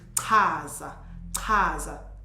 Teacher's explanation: you say the same sound, but you push it out, yeah, because it has an H